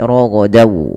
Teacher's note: Kalau huruf setelahnya waw, maka masukkan tanwinnya ke waw dan ditahan dan dibunyikan dengan huruf waw. Suara nunnya hilang. Rogodan menjadi rogodaw. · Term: idgham bi gunnah